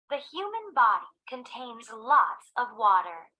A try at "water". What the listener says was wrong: The human body contains lots of water. अब ये water को ये water नहीं पढ़ रही, water नहीं पढ़ रही, ये अगर गौर से सुनो तो ये टा को डा पढ़ रही है.